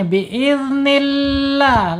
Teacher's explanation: Karena lam jalalahnya sebelumnya harokatnya kasroh. Kemudian jangan lupa penekanan di huruf lam, walaupun tarkik ditekan ya di huruf lamnya. Biiznillah, la panjang, lamnya panjang.